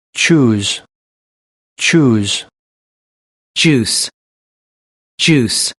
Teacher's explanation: plosive and then a fricative made in same place in the mouth